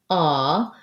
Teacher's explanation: when I say ah, like in law, my jaw is more open. My lips are still rounded, but not as tensely rounded. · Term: ah vowel